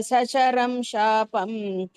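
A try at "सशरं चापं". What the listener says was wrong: Sasharang Chapam. Shapam no. Shapam is not there. Cha.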